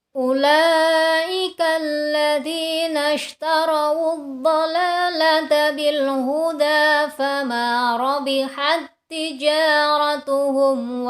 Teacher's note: Itu jika tidak bertemu ta lagi. Tapi karena bertemu dengan huruf ta lagi, maka sifat hamesnya tidak dibaca.